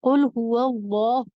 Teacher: پیش کی صحیح آواز یہ ہے کہ آپ اس کو او ساؤنڈ کے ساتھ پڑھیں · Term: معروف